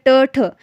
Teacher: हर वर्ग का पहला और दूसरा व्यंजन आपका अघोष व्यंजन होगा, क्योंकि कोई भी जो है कंपन उत्पन्न नहीं हो रही है।